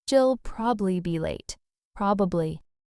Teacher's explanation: Yeah, like I'll probably be late sounds like I'll probably be late in normal conversation. The middle syllable just kind of fades out.